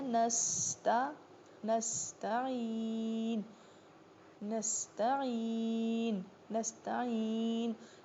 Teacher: اور سین میں باقاعدہ سیٹی کی آواز آنی چاہیے